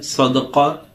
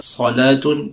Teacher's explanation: صاد تھوڑا موٹا منہ بھر کر پڑھا جاتا ہے